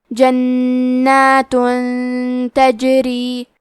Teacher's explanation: تا حروف الاخفاء میں سے ہے تو ہم یہ حکم کو غنہ کے ساتھ ادا کریں گے